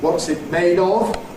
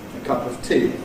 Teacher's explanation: strong vowel /ɒ/ in /ɒv/, weak vowel /ə/ in /əv/